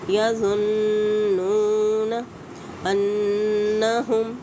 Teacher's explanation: नून मुशद्दद है, गुन्ना वाजिब होगा